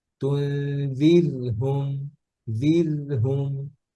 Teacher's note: কাসরার পরে র সুকুন আসছে, র পাতলা